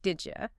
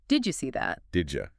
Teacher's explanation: The D and the Y sounds merge to make a J sound.